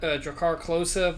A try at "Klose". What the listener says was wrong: I feel like there wasn't enough emphasis on the K in that for it to be German. Anyway, Klose!